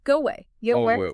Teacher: To say away, your mouth has to open and relax. The physical act of unrounding your vibrating lips to move from the O to the A actually creates the acoustic sound of a W. · go, your lips are pushed forward and rounded into a tight circle. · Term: Vowel-to-vowel linking, Vowel to vowel linking